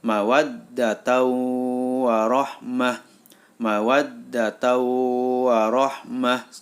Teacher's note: Bighunnah karena ada tanwin atau Fathur Tain bertemu dengan huruf wawu maka suara tanwin masuk ke dalam huruf wawu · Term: Idgham Bighunnah, idgham bigunnah